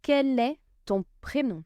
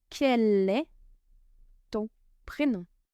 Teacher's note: As we've seen before, the first word ends with a consonant. The second word starts with a vowel. We link them together.